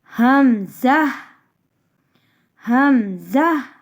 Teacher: ہا کو سینے کی جانب جو حلق ہے وہاں سے ہا ادا کیا جاتا ہے۔ حمزہ حمزہ، حلق کے آخر سے جو سینے کی طرف ہے اسی جگہ سے حمزہ بھی پڑھا جاتا ہے۔ ہا اور حمزہ کا ایک ہی مخرج ہے۔